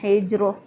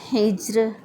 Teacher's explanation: اور بعض لوگ را کو، اس را کو بھی موٹا پڑھ دیتے ہیں، اس کو پڑھتے ہیں حجر، درست ادائیگی ہے حجر۔